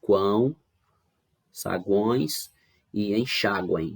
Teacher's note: Em todos eles aqui nós temos três vogais juntas, né? Com agora a diferença que também temos o som que sai pelo nariz, né? Sempre acompanhado aí de um tio ou de um M, né? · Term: sons nasais